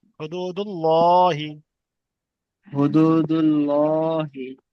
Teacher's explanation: ওয়াও সাকিনের ডান দিকে পেশ এসছে, ওয়াও মাদ্দা একালি পরিমাণ টান দিয়ে পড়তে হবে। · হায়ের উপর পেশ এসছে, পেশ হলো হারাকাত, হারাকাতের পড়াকে তাড়াতাড়ি পড়তে হবে, টান দিয়া নিষেধ